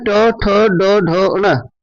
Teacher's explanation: टवर्ग इसका उच्चारण मूर्धन्य से होता है